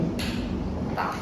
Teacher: Ujung lidah menyentuh pangkal gigi seri atas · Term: huruf ta